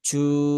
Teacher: dan jim ini dia tidak ada sifat hamas ya. Ya sifatnya jahar. Maka bukan ju.